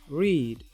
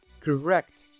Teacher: The tongue has a curved shape with the tip pointing towards the hard palate at the back of the alveolar ridge, the front of the tongue is low and the back on the tongue is rather high, as shown in the figure. The tongue-tip is not close enough to the palate to cause friction. The lips are rather rounded, especially when/r/ is at the beginning of words. · To describe r, we will say r is voiced post-alveolar gliding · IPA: /riːd/